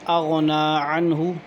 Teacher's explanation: عنہ پہ غنہ نہیں ہے کیونکہ نون ساکن کے بعد حروف حلقی میں سے ہا ہے، اس لیے غنہ نہیں ہوگا